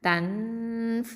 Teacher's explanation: அடுத்த எழுத்து பாருங்கள், ஃப வந்திருக்குது. நூன் சாக்கினக்கு அடுத்ததாக ஃப வந்துருந்துச்சுன்னா என்ன பண்ணணும், இது இஹ்ஃபா பண்ணணும், மறைச்சு ஒன்றா செஞ்சு ஓதணும்.